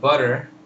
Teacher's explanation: of course the stress is on but but uh the important vowel is uh is er butter so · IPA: ər/ɚ